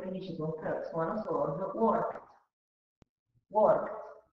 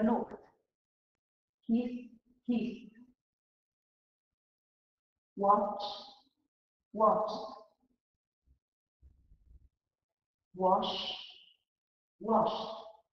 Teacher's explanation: Verbi che finiscono invece con un suono sordo pronunciano la ED con una T molto secca. Esempio, work che finisce con T, suono sordo, worked.